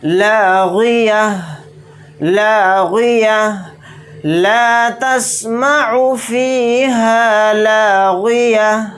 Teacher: تو تا کے اوپر 2 زبر ہیں، تو آیت کرنے کی صورت میں ہم تا کی آواز اس طرح سے نکالیں گے، یعنی گول تا کو ہا ساکن بنا دیں گے